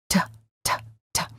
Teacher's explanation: you will notice that the tip of your tongue is touching and releasing your gum Ridge which is the upper part of your mouth right behind your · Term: fully pronounced T